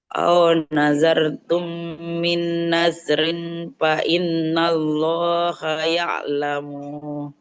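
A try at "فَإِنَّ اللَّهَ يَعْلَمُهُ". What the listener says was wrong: Imnya nggak boleh panjang. Bukan fa innallah ya. Fa innallah. Jadi lamnya itu nggak oh, tidak Allah ya, tidak seperti itu. Fa innallah. Fa innallaha ya'lamu.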